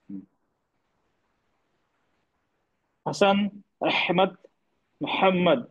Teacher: गले के बीच से निकल रहा है और आवाज में एक हल्की नरमी और सांस साफ सांस जैसी असर होता है